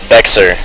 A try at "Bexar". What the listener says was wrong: Bear, like there's no X. And that's not even right, because it's a Spanish word that's supposed to be pronounced Behar. But they say bear like there's no X.